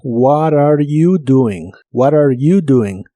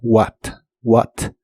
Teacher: es muy común en inglés americano conversacional que la t de What se pronuncie como r y que se junte con la siguiente palabra